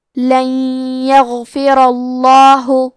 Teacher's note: لن یغفرہ، کلمت یغفرہ میں آخری میں را پہ زبر ہے، لہذا لفظ الجلالہ مطلب کلمت اللہ کے لام کا حکم ہے تفخیم تو ہم حرف اللام کو موٹی آواز میں پڑھیں گے